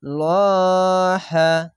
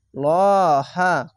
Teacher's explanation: খাড়া জবর এক আলিফ টেনে পড়বেন এবং মোটা করে পড়বেন।